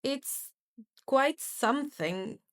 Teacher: it's quite something with level tone on both words. The level tone communicates your hesitation, and that creates humor through the awkward situation.